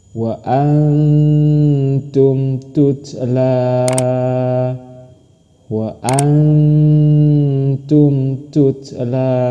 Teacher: maka cara membacanya dengan samar dan dengung · Ini nun mati bertemu dengan huruf ta. Nun mati bertemu dengan huruf ta sama, dibacanya dengan samar dan dengung.